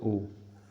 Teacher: ओ आपका हो जाएगा कंठोष्ठ दीर्घ स्वर में